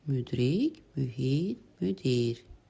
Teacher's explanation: Ü və i saitlərinin hər ikisi incə və qapalı saitlərdir.